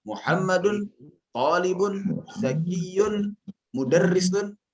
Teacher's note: pernyataan kesetaraan sintaks ya itu digambarkan dengan intonasi yang sama. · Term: kenaikan intonasi